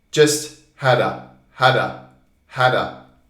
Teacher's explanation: these words are weak sounds they are almost like schwa we call it schwa which is a weak sound